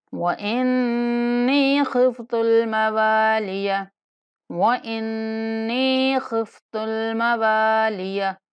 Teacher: نون پر غنہ کریں گے اور یا مدہ ہے تو ایک الف تک لمبا کر کے پڑھیں گے۔ خفت الموالیہ، خواہ کو پور کر کے پڑھیں گے، اس کے بعد واو کے بعد الف مدہ ہے، واو کو ایک الف کے برابر لمبا کر کے پڑھیں گے۔